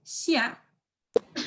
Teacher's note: X sound is kind of like an SH sound, but more airy in your mouth. So we're gonna say xia.